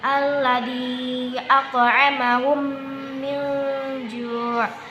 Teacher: Jadi idgham mimi artinya memasukkan dengan mim. Apabila ada mim sukun bertemu dengan huruf mim, maka hukum bacanya disebut idgham mimi. Cara membacanya dengan ditekan 2 harokat.